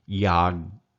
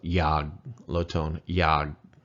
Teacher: Low tone and that K, which they call a K, I'm really thinking it's a G-ish, more G-ish than it is K-ish, but it's a hybrid GK sound.